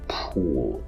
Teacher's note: already labial but now i exaggerate the labial feature of it i labialize the labial in order to do that i have to round my lips more and i have to push protrude my lips more